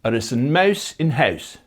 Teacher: Ui, where the lips are kept rounded throughout the whole thing.